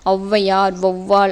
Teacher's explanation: தனித்து வர தனித்து வரும் இடங்களில் தனக்குரிய இரண்டு மாத்திரை அளவில் முழுமையாக ஒலிக்கும் அவ்வையார் வவ்வால் என சொற்களின் முதலில் வரும்போது தனக்குரிய இரண்டு மாத்திரை அளவில் இருந்து குறைந்து ஒன்றரை மாத்திரை ஃபர்ஸ்ட் ஃபர்ஸ்ட் லெட்டர்ல வரும்போது ஒன்றரை மாத்திரை அவ்வையார் வவ்வால் அப்படின்னு வரும்போது ஒன்றரை · ஔவையார், வௌவால் என சொற்களின் முதலில் வரும்போது தனக்குரிய 2 மாத்திரை அளவில் இருந்து குறைந்து 1.5 மாத்திரை. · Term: அவகார குருகம்